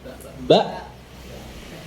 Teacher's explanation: dua pita suara kita itu nutup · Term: Hamzah sukun